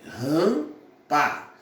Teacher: Não. Eu só pronuncio o P, mas o M não. O M é apenas um nasalizador desse A aqui. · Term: vogal nasal